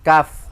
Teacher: Kalau kaf pangkal lidah tapi agak keluar dia di tengah